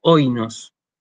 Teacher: Pese a que yo esta palabra la pronuncio oinos. El acento lo hago sobre la primera de las vocales del diptongo